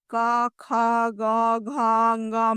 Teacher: क वर्ग यानी क, ख, ग, घ, ङ में हवा कंठ से निकलती है।